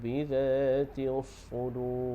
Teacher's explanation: huruf sad tu bagi dia berdesir, sebab ada syaddah lagi kuatlah desiran dia tu